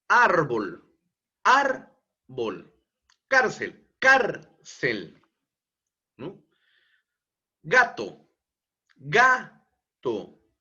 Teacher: la penúltima ubicación ejemplo árbol árbol cárcel cárcel no gato gato la penúltima sílaba es la que lleva mayor entonación de voz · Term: palabras graves